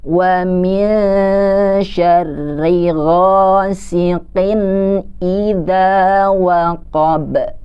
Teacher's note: Di sini ada dua huruf yang kedengarannya kayak o tapi dia berharokatnya fathah. Maka kita harus tetap membacanya dengan membuka mulut kita.